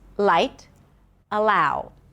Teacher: the light L that is a little heavier than the ultra light L that appears before a vowel or at the beginning of words.